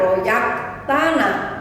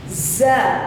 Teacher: Huruf za atau zai itu ada desisnya jadi jangan sampai tertukar dengan huruf jim atau huruf ya